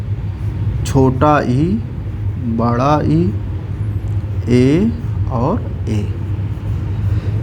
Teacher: अग्रस्वर का मतलब हुआ कि जो जिह्वा के आगे के भाग से बोला जाए